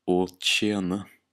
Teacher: The TJ can sometimes be pronounced like tsh